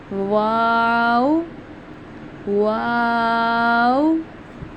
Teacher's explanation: Next letter है हमारा वाऊ। वाऊ को हम अदा करते हैं दोनों होठों की गोलाई से।